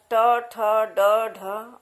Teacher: तब जीभ जो है मूर्धा को टच करती है, स्पर्श करते हुए ये स्वर निकलते हैं, ये वर्ण निकलते हैं।